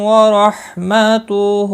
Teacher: را زبر کی وجہ سے پر پڑا جائے گا۔ باقی کسی بھی حرکت والے حرف کو کھینچنا نہیں، ہا کے اوپر الٹا پیش ہے، ایک الف کی مقدار کے برابر کھینچ کر پڑھیں گے۔